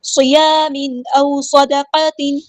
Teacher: تنوین کی آواز یہاں پہ ظاہر ہوگی، اظہار ہو رہا ہے · صاد ہمارا ہیوی لیٹر پورا ادا کریں گے، دال باریک لائٹ لیٹر ہے، قاف بھی ہمارا ہیوی لیٹر ہے پورا ادا کریں گے